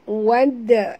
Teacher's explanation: dal mati di tengah-tengah kalimah, lantunkan dia qalqalah sughra